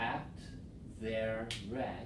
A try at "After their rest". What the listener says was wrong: Not after. Make sure you have the second syllable. After their rest.